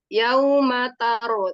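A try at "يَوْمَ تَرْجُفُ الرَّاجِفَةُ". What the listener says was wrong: jangan kuat-kuat tanya. Jangan terlalu kuat. mau mentafsirkan roh jadi tar. Ta, Kadang-kadang ya itu karena mau mentafhimkan ro sukun sebelumnya fathah, kebetulan yang fathah jadi tanya jadi ikut terbaca tebal.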